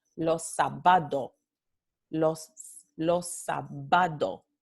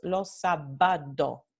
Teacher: In this phenomenon with the canario, they're still going to be oclusivas because the only thing that has happened is that these two oclusivas sordas, pa y ta, became oclusivas sonoras. So they're still oclusivas.